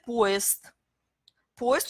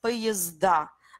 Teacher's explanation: Poest, on prononce st. Quand il y a plusieurs trains, on prononce poezda. Là, ça devient encore z-d